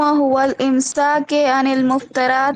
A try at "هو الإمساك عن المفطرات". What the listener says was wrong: هو الامساک نہیں، هو الامساک کوئی ایسی چیز نہیں ہے نا۔ دیکھیے زیر جو ہے رئیسہ بنا کسی سبب کے نہیں لا سکتی آپ، تو آپ کہیے هو الامساک۔